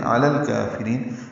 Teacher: الکافرین غیر یسیر، علی اور الکافرین ملا دیں گے، علی الکافرین، لام ساکن پہ اظہار ہے، کاف باریک ہے، را بھی باریک ہے